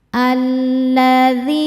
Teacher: Dhi hukumnya mad tabi'i dhahiri, sebab ada ya sukun sebelumnya kasrah. Cara bacanya panjang 2 harokat.